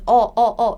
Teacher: It's not A, it's not O, it's between A and O